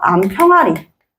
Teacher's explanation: 여기에 있는 이 히읗, 눈에 보이지 않는 소리 날 때 붙게 되는 이 히읗이 발음에서 축약돼서 암평아리.